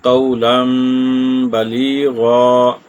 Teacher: اب یہاں پر قولا، لام کے اوپر 2 زبریں ہیں، تو تنوین یعنی یہاں پر آ گئی ہے، اس کے بعد با ہے تو یہاں پر بھی اقلاب ہوگا